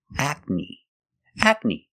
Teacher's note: the second syllable is ni. The long E like green beans